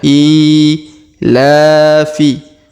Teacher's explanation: huruf i kita panjangkan dua harakat karena di bawahnya terdapat Alif kecil